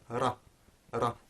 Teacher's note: quick flaps against the upper front part of the mouth, which is known as the alveolar ridge. Now if you imagine isolating a single one of those flaps, so ra, ra, that's the ra sound.